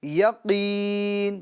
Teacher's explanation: اس نون کے نیچے جو حرکت ہے یعنی زیر، اس کو ہم سکون میں بدل دیں گے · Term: ساکن